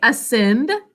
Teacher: there's an unstressed syllable at the beginning